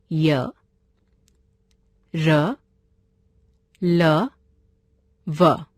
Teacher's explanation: इनका उच्चारण करते समय जीभ मुंह के किसी भाग को भी पूरी तरह स्पर्श नहीं करती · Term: अंतस्थ व्यंजन